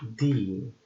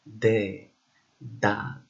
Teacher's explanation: a voiced dental and fricative sound, like in de, that.